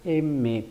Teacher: al pronunciar la consonante M, vamos a notar que gran parte del aire sale por la nariz. Por eso la M es nasal.